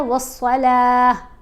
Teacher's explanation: वस्सलात, ता के नीचे ज़ेर नहीं पढ़ी जाएगी, साकिन पढ़ा जाएगा, बल्कि ता की आवाज़ खामोश हो जाती है, वस्सलाह, हा की आवाज़ आती है।